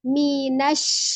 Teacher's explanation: Ya, tengah lidah berada di langit-langit atas. Jadi bukan dengan memonyongkan bibir, bukan syafatain. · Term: huruf shin